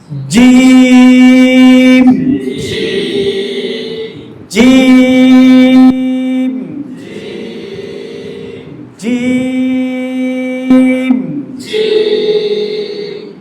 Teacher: উপরে তাল লাগবে জিহ্বার মধ্যখান উপরে তালুর সাথে লাগবে না বুঝছেন জোরে যখন বলবে তখন অটোমেটিক জিব্বার মধ্যখান উপরে তালুর সাথে লাগবে